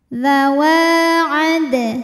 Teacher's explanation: Sugra sebab huruf qalqalahnya sukun asli dan ada di tengah bacaan cara bacanya adalah dipantulkan dalnya dengan pantulan yang kecil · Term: Qalqalah Sugra